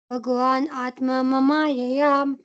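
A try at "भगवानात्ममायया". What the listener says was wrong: Not Mamayaya. Bhagwan Atma Mayaya.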